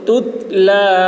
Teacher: باریک ہوگی اذا تتلا تا میں قلقلہ نہ ہونے پائے